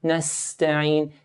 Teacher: Seen here has a sharp S hissing sound.